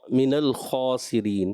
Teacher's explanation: اور من الخاسرین، من موٹا محسوس. اب خا کو پر کرنا ہے، نون اور لام کو پر نہیں کرنا.